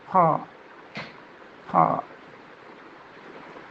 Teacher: ഹോയുടെ മഹ്റജ് തൊണ്ടയുടെ മുകൾ ഭാഗത്തു നിന്നാണ്. അപ്പോൾ അത് ഒരു സ്ക്രാച്ച് സൗണ്ട് അതിന് വരേണ്ടതുണ്ട്.